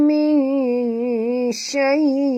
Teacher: min nun mati bertemu shim, sorokkan bunyi nun ke dalam shim disertai dengung 2 harakat. Di sini hukumnya ikhfa haqiqi, ya.